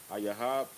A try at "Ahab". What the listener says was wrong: Not a Yahab. Ahab.